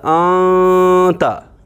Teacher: تو سیدھے ہی اور سادھی زبان میں اگر سمجھایا جائے، گنہ میں ناک میں آواز بند ہو جاتی ہے یہاں اس ہڈی میں، اور اخفاء میں ناک میں آواز چھپتی ہے مگر گونجتی ہے، پوری ناک میں آواز گونجتی ہے